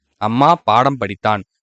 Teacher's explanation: அரை மாத்திரை தான் மகர மெய்யெழுத்துக்கு முழுமையாக ஒலிக்கிறது